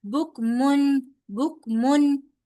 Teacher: यहां पर हम तनवीन को इजहार करके पढ़ेंगे। यानी के उसको हम लोग उसकी पूरी बकायदा उसकी साउंड के साथ पढ़ेंगे।